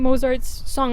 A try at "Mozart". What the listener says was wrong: Why are you saying Mozart like mozzarella? Mozart. Mozart. You're saying Mozart. You're going Mozart. Because it's not mozzarella.